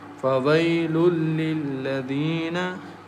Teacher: There is a noon tanween is followed by lam, and lam is one of the merging letters, so we merge noon tanween into lam and recite without nasal sound